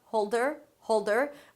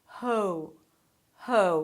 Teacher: you do go through this nice diphthong starting from oh and then closing to oo